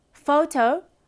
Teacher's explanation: for photo fo is stressed and toe is unstressed